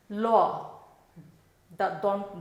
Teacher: দাঁতের গোড়া থেকে উচ্চারণ হচ্ছে